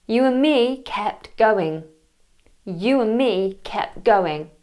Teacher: I mentioned earlier the and. We sometimes miss the D off.